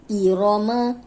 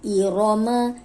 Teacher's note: اب رو پہ جب بھی زبر یا پیش آئے گی تو را موٹی پڑی جائے گی